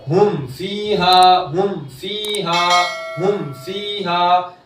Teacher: इजहार शफवी में गुन्ना नहीं करेंगे। अब यहाँ हुम फीहा ऐसा नहीं, यहाँ सीधे हुम फीहा, हुम फीहा, हुम फीहा।